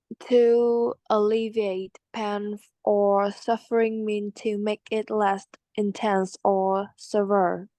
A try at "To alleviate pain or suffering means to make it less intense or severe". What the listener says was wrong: Yeah, severe.